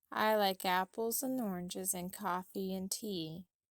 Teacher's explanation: reduce the word and to a shortened sound as well as closely link the surrounding words to it